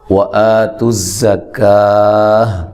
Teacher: وَآتُوا الزَّکَاةَ مد اصلی ہے، زا کو زور سے ادا کرنا ہے اور لمبا نہیں کرنا۔ کاف کو باریک پڑھنا ہے، مد اصلی ہے، وقف کی صورت میں یہ گولتا جو ہے یہ ہا میں، ہائے ساکنہ میں تبدیل ہو جائے گی، ٹھیک ہے جی۔